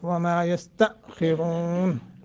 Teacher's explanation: حمزہ ساکن جھٹکا دے کے پڑھیں گے اور آ کو موٹا